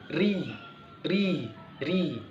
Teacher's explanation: Ketika mengucapkan huruf ro yang kasroh, maka inkhifadu aqsal lisan, merendahnya atau turunnya pangkal lidah. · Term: istifal